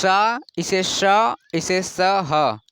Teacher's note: ये जो तीनों है, तीनों में रगड़ाहट की हल्का हल्का से उत्पन्न होती है ध्वनि, तो इसे उष्म व्यंजन कहते हैं।